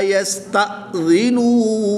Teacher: یا ساکن سے پہلے رال کے نیچے زیر ہے تو یہاں پر یا مدہ ہوگا، ایک الف یعنی 2 حرکات کے برابر کھینچ کر پڑھیں گے۔ یہاں پر حمزہ ساکن ہے تو اس کو ہم جھٹکا دے کر پڑھیں گے۔ کھڑی زبر کے بعد حمزہ اسی کلمے میں ہے تو یہاں پر مد متصل ہوگی، 3 سے 5 الف تک کھینچ کر پڑھیں گے۔